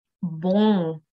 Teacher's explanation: on ne va pas prononcer clairement le M final, mais on va par contre nasaliser la voyelle qui est avant le M. Et donc, la lettre finale ne va s'entendre presque pas.